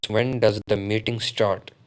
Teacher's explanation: The word start, including the question mark, rises up or comes up in your voice when you utter the word. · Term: intonation